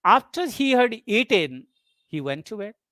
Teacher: In a complex sentence where there is a subordinate clause before the main clause, a rising tone is used for the subordinate clause and a falling tone for the main clause.